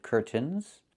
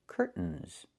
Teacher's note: Or I can use a stop T and say curt, stop the air, put the tongue up, curtains, and go directly to the N, curtains. So curtains or curtains, both pronunciations are correct.